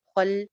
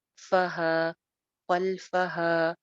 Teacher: خل لام جما کے، خا موٹا ہے